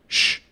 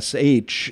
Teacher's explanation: is what those two consonants would seem to imply it's actually a completely other consonant sh that is made a little bit further back in the mouth than the S sound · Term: sh sound